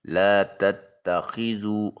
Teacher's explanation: لا تتخذوا خا کو حلق سے ادا کرتے ہوئے واو ساکن اور اس سے پہلے والے حرف ذال کے اوپر پیش ہے، واو مدہ ہے، اس کو ایک الف کے قائم مقام لمبا کریں گے۔